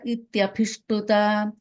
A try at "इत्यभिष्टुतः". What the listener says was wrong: that second line, Abhishtutaha, there's a visarga there. Again, the second line, Ityabhishtutaha, visarga there.